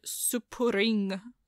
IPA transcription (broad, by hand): supurɪŋ